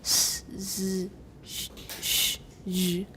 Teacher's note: They have more acoustic energy, that is, greater loudness, at a higher pitch than the other fricatives. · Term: sibilant sounds